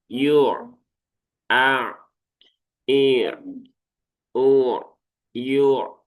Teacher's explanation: Pertengahan antara syiddah dengan rokhawah. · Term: sifat tawasud